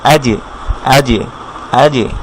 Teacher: আমরা গত ক্লাসে বলেছিলাম বা যেমন কলকলা হয়, যেমন আমরা এখানে দেখেছিলাম লিজিবে, ঠিক একইভাবে জিমের উপরে যদি সাকিন থাকে সেই সাকিনটাকে আমরা কলকলা করতে হবে